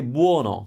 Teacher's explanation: in Naples they would say buono with a closed o